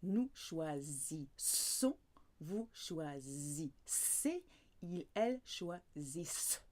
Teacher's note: So you've got that Z sound of the S between two vowels, but when it's double S, it's a very clear S.